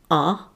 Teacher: say ah starting at the low center place in your mouth